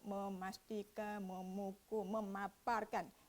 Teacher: apabila kita sebut memukul, automatik huruf P itu berlaku peleburan fonem P.